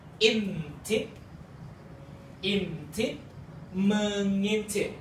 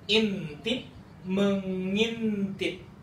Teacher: if you find the sound of ng followed by a vowel sound, this is because this becomes one sound